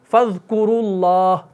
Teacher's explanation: تو فَاذْكُرُوا میں را کے اوپر پیش ہے تو وہاں پر بھی را کو موٹا پڑھا